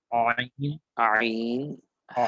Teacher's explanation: কণ্ঠনালীর মধ্যখান হইতে আইন, আর কণ্ঠনালীর শুরু হতে হামজা।